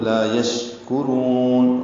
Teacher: شین ساکن پہ ہمس ہے، تفشی ہے، منہ میں آواز پھیلتی ہے اور شین پہ ہمس ہوتا ہے، کاف باریک ہے، یعنی سانس جاری رہتی ہے اس کے پڑھتے ہوئے.